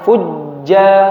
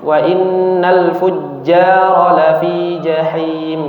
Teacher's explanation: Yang pertama kalau sifatnya itu hurufnya syiddah ya seperti jim ini maka agak tertahan